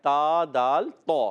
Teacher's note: زبان کا سرا اوپر کے دانتوں کی جڑوں سے یہ ادا ہوتا ہے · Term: حروف نطعیہ